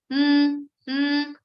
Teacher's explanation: It's called Anuswara. The sound of Anuswara is mm, mm. It's not ma, but mm.